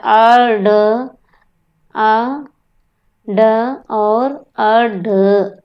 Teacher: इसके उच्चारण में जीभ ऊपर उठकर झटके से नीचे आती है। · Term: उत्क्षिप्त